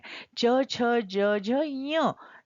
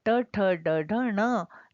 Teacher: हम पांचवा व बोलते हैं तो हम नाक से आवाज निकालते हैं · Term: अनुनासिक